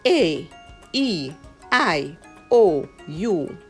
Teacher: Spanish has five vowels and they are always pronounced the same way. Short, pure, and crisp. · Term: pure vowel sounds